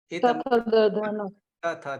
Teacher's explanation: ઉચ્ચારણ સ્થાન જેનું દાંત છે, જીભ આપણી દાંતે અડે છે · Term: દંત્ય વ્યંજન